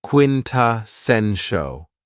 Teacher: this word has 4 syllables, and the stress is on the third syllable